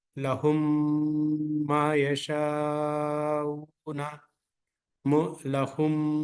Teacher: ادغام کرنے کا مطلب یہ ہے کہ 2 حرکات تک میم کی آواز کو پکڑ کے رکھنا ہے۔ اس کے لیے بہت آسان طریقہ یہ ہے، میم کا مخرج جو ہے نا، دونوں ہونٹوں سے میم کی آواز نکلتی ہے، تو دونوں ہونٹوں کو اسی طریقے سے پکڑ کے رکھنا ہے 2-3 سیکنڈ تک، یعنی 2 حرکات تک جو ہے نا اس کو چھوڑنا نہیں ہے۔ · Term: ادغام شفوی